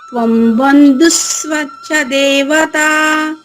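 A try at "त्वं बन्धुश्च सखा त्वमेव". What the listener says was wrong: అక్కడ సాకి వాకి మధ్యలో తా ఒకటి ఉందమ్మా. త్వం బంధుస్త్వం చ. త్వం బంధుస్త్వం చ. త్వం బంధుస్ ఒక అక్షరం ఇక్కడ వచ్చేసింది. త్వంచ. త్వం బంధుస్త్వంచ.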